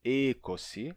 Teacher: numa pronúncia mais antiga pode se pronunciar como um E longo e fechado, ekosi, ou então ikosi, mas jamais como eikosi, tá?